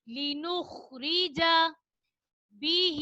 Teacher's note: کھڑی زیر کو ہم ایک الف کی مقدار کھینچ کر پڑھیں گے